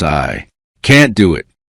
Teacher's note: can't is usually stronger because it changes the meaning of the sentence.